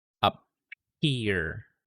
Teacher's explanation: After the P sound, nagkakaroon ng exhale for the H sound.